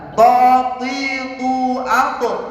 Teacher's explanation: Kalau to berarti bibirnya yang dikedepankan. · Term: huruf to